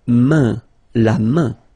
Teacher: So this combination A-I-N is quite interesting because it will give you the sound un. So it's really a nasal, it goes in your nose